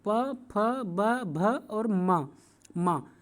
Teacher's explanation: जब आप लोग प, फ, ब, भ, मा को बोलेंगे तो आप देखेंगे कि आपके दोनों ओठ आपस में टच कर रहे हैं, स्पर्श कर रहे हैं। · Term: ओष्ठ ध्वनि